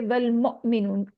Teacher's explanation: वाव हमजा साकिन है तो इसलिए यहाँ पे हल्के से झटके के साथ पढ़ेंगे और आखिर में 2 काउंट स्ट्रेच करेंगे वाव मद को।